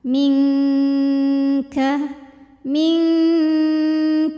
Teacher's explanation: cara membaca Nun sukunnya adalah samar-samar jadi kita siap-siap ke makhraj huruf di depannya yaitu makhraj huruf Kaf ya disertai bunyi dengung Nah karena Kaf ini makhrajnya jauh dari Nun yaitu di Pangkal · di depannya yaitu makhraj huruf Kaf ya disertai bunyi dengung Nah karena Kaf ini makhrajnya jauh dari Nun yaitu di Pangkal lidah kalau Nun di ujung lidah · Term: ikhfa